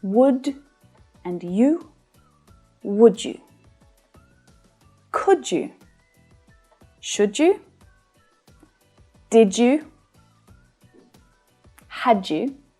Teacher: where one word ends in a d and it's followed by a word that starts with a y, often it can combine to create the j sound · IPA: /dʒ/